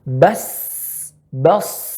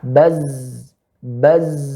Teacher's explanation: Ya, ini huruf hamsun. Banyaknya udara yang keluar, mengalir. Sementara pada za, ya, kebanyakan udara itu tahan. Baz, baz. Dia lebih fokus kepada getaran.